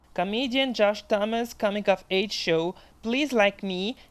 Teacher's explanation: Donc, il a sauté le S dans Thomas's et il a dit like me.